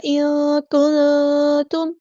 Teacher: نون ساکن کی آواز کو یہاں چھپا دیں گے، اخفا ہوگا · میم ساکن پر اظہار شفوی ہوگا، ہم یہاں پہ ٹائم نہیں دیں گے۔